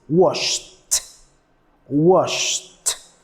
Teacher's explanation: the last sound is sh no vibration